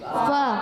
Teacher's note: اچھا فا کی ادائیگی جو ہوتی ہے نا وہ اس کا مخرج اوپر والے دانتوں کے کنارے جب نیچے والے ہونٹ کے تر حصے سے لگتے ہیں تو ادا ہوتا ہے فا